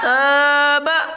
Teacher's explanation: الف سے پہلے زبر ہے، اس کو تھوڑا کھینچ کر پڑھیں، معروف پڑھیں، مجہول آواز سے بچیں